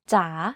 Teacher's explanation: In rising tone, the pitch goes down first and then goes up. · Take, for example, the Thai name จ ๋ า You can hear that my pitch went down slightly and then up when pronouncing this word.